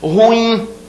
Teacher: Ruim, a última sílaba é tônica. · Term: oxítona